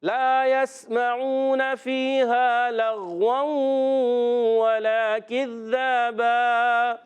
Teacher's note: دو زبر کی تنوین کو الف سے بدلنا ہے، ٹھیک ہے. اس کو کہتے ہیں وقف بالابدال مال الف.